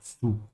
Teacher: the Z sound in German is pronounced like a TS sound